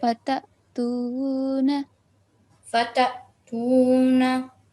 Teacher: on top of noon, don't prolong the short stroke of fatha for more than 1 second